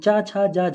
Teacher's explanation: चा, छा, जा, झा, ये स्पर्श संघर्षी होते हैं